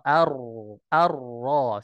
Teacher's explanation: bergetarnya ee ujung ujung lidah ketika mengucapkan huruf Ra tapi dengan getaran yang yang ringan saja tidak ee getarannya yang begitu Ee banyak ya kecuali ee ketika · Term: sifat takrir